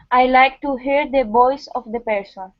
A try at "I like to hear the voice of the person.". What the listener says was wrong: Good. Good job.